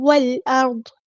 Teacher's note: ہم نے دیکھیں واو کو لام کے ساتھ ملا دینا ہے. حمزۃ الوصل ڈراپ ہو جائے گا. لام یہاں پر لام قمریہ ہے، اس کو ہم ظاہر نہیں کریں گے، بالکل بھی نہیں.